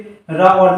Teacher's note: रा और ला हमारे वर्त से यानी दंत मूल से बोले जाते हैं।